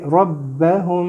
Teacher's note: را کو تھوڑا سا موٹا کریں گے